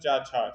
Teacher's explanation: चा जो वर्ग होता है वो तालु से बोला जाता है।